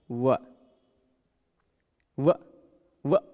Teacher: व बोलते हैं तो ऊपर का दांत नीचे का ओष्ठ टच होता है। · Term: दंतोष्ठ